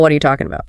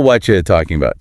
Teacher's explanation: The T in what and the Y in you crash together to make a CH sound, while the R completely evaporates.